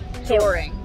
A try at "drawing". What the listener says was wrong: Drawing. There's no freaking R in the after the W. Drawing. Drawing.